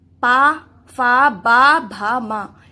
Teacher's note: और पा, फा, बा, भा, मा, इसमें क्या हो रहा है, पा का उच्चारण में क्या हो रहा है, हमारे होठ लग रहे हैं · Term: ओष्ठ्य